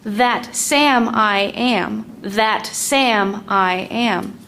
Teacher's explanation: The word am is still strong in this second foot. That means the word I is actually a weak one. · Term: weak strong